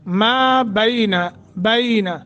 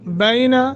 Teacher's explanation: बैन एक second की मद नरमी के साथ, हरूफ लीन है